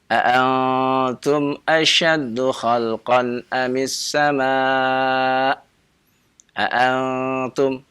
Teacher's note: ikhfa menempel dekat, ya, sehingga terdengar suaranya samar. · Ya, karena itu ikhfa, ya, dia tempelkan nun sukunnya kepada huruf ta-nya. Ya, jadilah dia ikhfa.